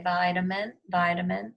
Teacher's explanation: But in the middle, we say vitamin, vitamin, sounds like a short U, vitamin. And this is the schwa.